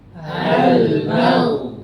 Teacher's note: huruf tebal sukun itu mengikuti harokatnya karena fathah itu tingkatan pertama dia lebih tebal. Jangan ma.